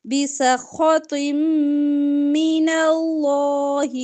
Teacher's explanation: دو زیر کی تنوین کے بعد اگر میم آ جائے تو ادغام ہوتا ہے گننے کے ساتھ ٹھیک ہے طیم ایسے پڑھیں گے بسخط من اللہ ومأواہ جہنم